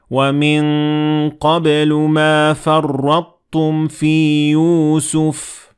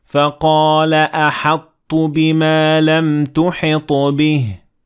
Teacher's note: Here, there is a partial fusion between these two letters, which means that we will keep some traits from both letters, not everything. So we will pronounce the ta without echoing it, without qalqala. And the ta will follow very lightly when pronouncing the tashkil on top.